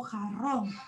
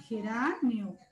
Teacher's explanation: Si yo digo jarrón, esta R de acá sería una R vibrante.